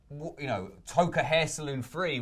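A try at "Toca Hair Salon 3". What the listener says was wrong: Toka Hair Salon 3. You said Hair Saloon. Like a sort of Western...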